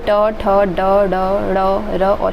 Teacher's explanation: मूर्धन्य से ट, ठ, ड, ढ, ड़, र और श आता है।